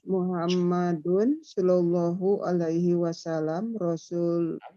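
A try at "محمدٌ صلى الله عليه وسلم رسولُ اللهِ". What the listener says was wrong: Bukan rasuli. Rasulu dhammah. Rasulullah. Atau kalau dibaca wasallama itu kalimat yang kalau dihapus pun nggak akan berpengaruh terhadap struktur kalimat. Jadi nggak akan merubah kata setelahnya di kasroh, dhamma, fathah, nggak ada pengaruhnya.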